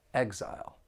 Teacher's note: This noun has two syllables and the stress is on that first syllable.